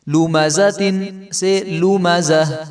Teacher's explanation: گول تا پر وقف، جس کلمے کے آخر میں گول تا ہو خواہ اس پر ایک زبر زیر یا پیش ہو یا دو زبر دو زیر یا دو پیش ہوں اسے وقف کی صورت میں ہائے ساکنہ سے بدل کر وقف کریں